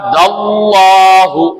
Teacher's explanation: த வாய குவித்து சொல்வது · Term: வல்லினமாக